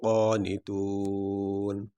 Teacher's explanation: یہاں پہ آخری حرف ہے نون، تو یہاں پہ وقف کرتے ہوئے ہم نون کو تو پڑھیں گے لیکن اس کے اوپر جو زبر ہے وہ نہیں پڑھیں گے، نون کو ساکن پڑھیں گے۔